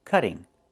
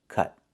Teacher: Move the stress to the first syllable.